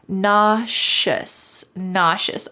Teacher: The S in the middle sounds like shh. Nauseous.